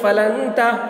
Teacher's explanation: نون ساکن کے بعد حروف اخفا میں سے تا آ رہا ہے، اس لیے نون کی آواز کو ناک میں چھپا کر پڑھیں گے، اس کو اخفا کہتے ہیں